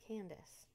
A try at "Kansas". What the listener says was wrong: There's no D in Kansas. You're just like Candace. Like the name Candace.